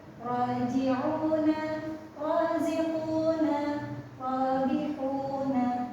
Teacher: Selanjutnya ada ro sukun. Nah, ra sukun ini di ujung pangkal lidah menempel ke gusi.